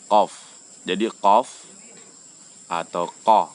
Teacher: Itu keluarnya adalah bagian lidah yang paling belakang. Dia bukan keluar di tenggorokan. Bukan masuk pada makhraj al-halq. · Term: huruf qaf